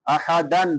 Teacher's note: یخشون احدا الا اللہ، احدن، دال کے اوپر نون تنوین ہے، بعد میں حروف حلقی میں سے حمزہ ہے تو یہاں پہ اظہار ہوگا